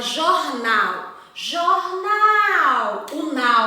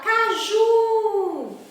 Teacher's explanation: a sílaba tônica sílaba pronunciada com mais força com mais intensidade ela é a última na palavra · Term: oxítona